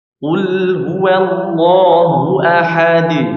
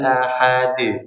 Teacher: jangan sampai diberikan Hamzah pada akhir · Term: Qalqalah